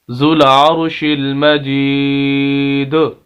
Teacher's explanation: دال کے آخر میں آواز ہم اس کو ہلا کر پڑھ رہے ہیں اسی کو قلقلہ کہتے ہیں